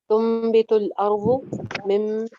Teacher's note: फदउ लना रब्बक युखरिज लना मिम्मा तुम्बितुल अर्ज़, तुम्बितुल पे आ गया है जी, नून के बाद बा, नून के बाद बा आ जाए तो फिर क्या होता है, नून की आवाज मीम में चेंज हो जाती है, इसको इखलाब कहते हैं, एक अलिफ के बराबर यहाँ पे गुन्ना भी हो जाता है।